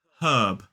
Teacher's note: This word is 1 syllable and it is herb. We do not pronounce the R in this word, whereas in American English it's more like herb.